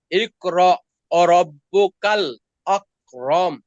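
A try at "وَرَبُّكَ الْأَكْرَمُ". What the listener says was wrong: এখানে একটু মোটা হয়ে গেছে। আকরাম।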